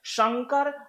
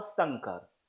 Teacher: एक तालव्य श वाला, एक दंत स वाला